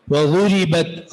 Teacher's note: وضربت را یہاں پر را مکسورہ ہے اس لیے اس را کو باریک پڑھیں گے